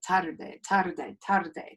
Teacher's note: tapping that tongue on the roof of your mouth right behind your teeth to make the the r sound which is really like a